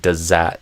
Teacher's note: the Z could even end up kind of deleting the TH, could like override the TH. And you could just have like does that in connected speech.